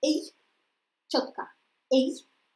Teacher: первый звук сильнее, второй слабее, но это звук, состоящий из двух частей. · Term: дифтонг